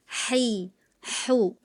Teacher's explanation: Kedua bunyi 'ha' adalah huruf 'halqi' , yang artinya berasal dari tenggorokan. Keduanya berasal dari tenggorokan, tetapi titik artikulasinya berbeda.